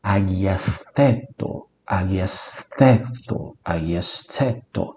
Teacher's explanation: Ele é mais ou menos um T com uma almofadinha na sua língua quando você o pronuncia. Ele não é um T duro, ele é um T suavizado.